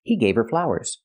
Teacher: You don't hear the H in her because her is not a stressed word.